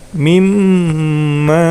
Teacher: Kemudian huruf mimnya dibaca panjang oleh 4 harokat atau 5 harokat, ya, asalkan konsisten.